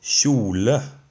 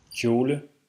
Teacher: In Norwegian it's kj, a voiceless palatal fricative, while in Danish it's k.